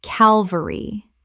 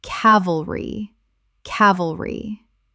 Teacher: Three syllables with the stress on the first.